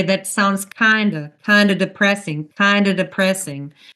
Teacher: We drop the V in of and make it a schwa.